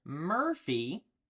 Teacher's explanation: you can hear that that R sound that R is kind of built into that vowel